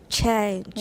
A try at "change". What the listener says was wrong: No. You're thinking about the nasal. 那个 nasal 把它忘掉. Chay. No. Stop speaking English, first of all, and then stop thinking about the nasal. 后面的根本就忘掉。只有 ch-a-e, right?